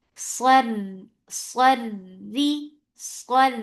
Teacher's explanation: Ra is light here because there is kasra on it.